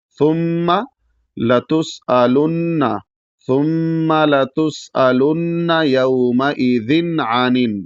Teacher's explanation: और जब गुना नहीं होगा तो इसका मतलब वहां तनवीन को पूरी तरीके से पढ़ेंगे और नाक में आवाज नहीं ले जाएंगे · ذن کو پورا پڑھنا ہے بغیر ناک میں آواز لے جائے